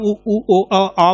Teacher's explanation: इस तरह से वृत्तमुखी आप उ ओ आ बोलेंगे तो ये जो है गोलाकार होंगे